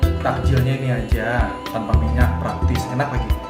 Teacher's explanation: penutur mengubah bunyi fonem konsonan N menjadi konsonan M.